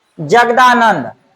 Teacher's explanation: त के स्थान पर आपको द हो जाता है